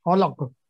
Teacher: قاف پہ جو ہے نا وہ کریں گے کلکلا کیونکہ یہاں پہ ہم وقف کر رہے ہیں. خلق وقف کریں گے تو کلکلا کبرا ہوگا.